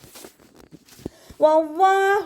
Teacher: തൊണ്ടയുടെ അവസാന ഭാഗത്തുനിന്ന് ഹ സുക്കൂനിന്റെ സൗണ്ടിനെ ഫീൽ ചെയ്യിപ്പിക്കു ട്ടോ